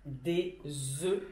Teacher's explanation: on ne prononce pas le F